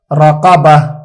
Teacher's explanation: گول تا کو ہا سے بدل دیں گے